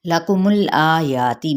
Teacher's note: میم کی پیش کو لام کے ساتھ ملائیں گے